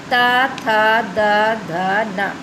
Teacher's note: ता वर्ग में देखिए हम दांतों को टच करते हैं, इसलिए इनको दंतस्थ कहा जाता है।